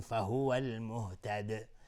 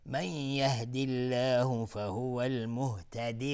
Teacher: المهتد الف لام قمری. دال اینجا اگر توقف کردیم قلقله میخواد، میگیم فهو المهتد.